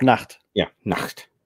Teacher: The T is pronounced. But it's not a hard T, so to speak.